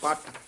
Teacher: ਜਿਆਦਾ ਕਸਕੇ ਨਹੀਂ ਪੱਟ ਨਹੀਂ ਕਹਿਣਾ ਪਟ ਦਰਮਿਆਨਾ ਜਿਹਾ ਬੋਲਣਾ